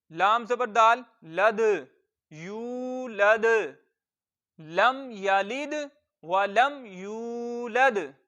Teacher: और दाल साकिन है, हरूफे कलकला में से है, तो कलकला खूब जाहिर होगा, यानी आवाज लौट कर निकलेगी। लाम को हम दाल के साथ भी मिलाएंगे क्योंकि दाल साकिन है। साकिन होने की सूरत में इस पे दो कायदे लग रहे हैं, एक तो ये पहले वाले से मिल जाएगा और दूसरा इसमें कलकला खूब जाहिर होगा।